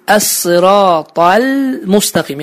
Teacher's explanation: Baxın, əs-sıratal müstəqim. Yəni ləm hərfindən mim hərfinə keçid aparırıq və ləm hərfini şəddələmirik